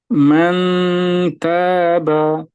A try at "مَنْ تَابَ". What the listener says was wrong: মান এটা না, মান জিহ্বার অগ্রভাগটা ওখানে তায়ের মাখরাজে লাগাই ফেলবেন ইয়ার সময়, মানে গুন্নার সময়। মান মান তাবা